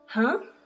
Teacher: Second tone is a rising tone and used in English when asking a question showing a surprise.